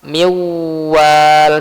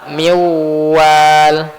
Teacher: gunnahnya itu ada ketika pas nunnya ya. Pas nun masuk ke waw. Tapi pas wal itu nggak ada gunnah. Miwal, bersih. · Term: idgham bil gunnah